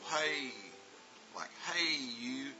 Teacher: And A is a rising tone. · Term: long vowel A